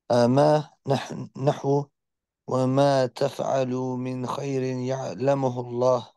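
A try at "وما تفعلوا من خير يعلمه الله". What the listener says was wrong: No, there's no قلقلة on the ميم.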